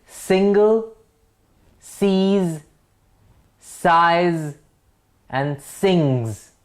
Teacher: single, the first word, does not have the Z sound